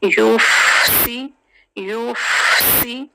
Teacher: वयुफ़सिदून, वयुफ़ फा साकिन है। जब लेटर साकिन होता है तो उसको हम सुकून से अदा करते हैं और फा में थोड़ी सी ऐसी एयर आती है। यूफ़सी, यूफ़सी और सीन की सीटी क्लियर करेंगे।